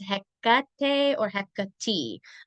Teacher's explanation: It's the middle syllable that needs to be like emphasized for her.